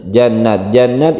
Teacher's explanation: sanuddiqiluhum langsung ke jam Jannah jannat ini kita panjangkan karena ghunnah ghunnah musyadadah Nun yang bertasyyid itu kita panjangkan